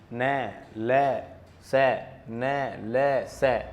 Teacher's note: क्यों कहते हैं, क्योंकि वर्तस्य वह स्थान होता है जो मसूड़ों और दांतों के बीच में है, यानी ये पूर्ण रूप से दांतों से न टकराते हुए जीभ थोड़ी सी ऊपर की तरफ झुकाव देती है, ऊपर की तरफ मुड़ जाती है, जो कि पूर्ण रूप से मसूड़ों के पास भी नहीं गई, दांतों के पास भी नहीं गई, दोनों के बीच में रहती है। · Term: वर्तस्य व्यंजन